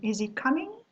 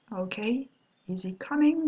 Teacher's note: is he coming? Your voice is rising at the end.